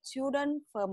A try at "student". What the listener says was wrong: rồi, chỗ nó sai đó. Stu là sờ tờ mà. Chú, chị đọc thành là student. Không có chú, mà là sờ tờ. Stu. Sờ tờ nè. Stu. Chậm lại mới sửa được.